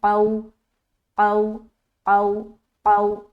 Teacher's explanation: اب یہاں پر دیکھیے قاف، یہاں پر واو ہے، واو ساکین ہے، اس سے پہلے زبر ہے، تو واو لین کریں گے، نرمی کے ساتھ ادا کریں گے، لیکن قاف موٹا ہوگا